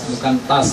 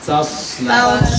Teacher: Sod kan huruf isti'la. Berarti dia harus tebal.